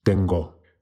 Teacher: Resist the temptation to say tengo. It's not a diphthong. O. Tengo.